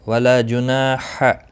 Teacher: ہا وسط حلق والا ہے، اس کی ادائیگی بہت ضروری ہے۔ یہاں پر دوسرا دو چشمی ہا جو ہوتا ہے وہ نہیں نکلنا چاہیے، البتہ یہاں وسط حلق والا ہا ہے